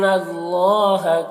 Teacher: اللہ کے لام کو پر پڑھیں گے